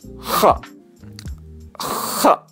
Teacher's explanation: Al-isti'la itu artinya terangkat. Berarti lidahnya terangkat.